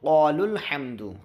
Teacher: قال لام کے بعد جو الف ہے یہ حرف مد تھا، لیکن سکون آیا اسی لیے وہ الف گر جائے گا، اب لام کو پکڑ لے گا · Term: حرف مد گر جائے گا